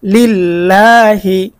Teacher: আল্লাহ শব্দের ডানে জের রয়েছে। জের থাকার কারণে আল্লাহ শব্দের লামটাকে আমরা চিকন করে পড়বো।